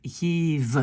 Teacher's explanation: à la fin, ça devient plutôt un E très très doux